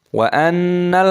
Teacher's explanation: Di sini ada nun tasdid, hukumnya dibaca gunnah berdengung.